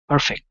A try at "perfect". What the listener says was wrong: Okay, very nice.